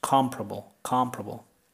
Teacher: in American English this is only three syllables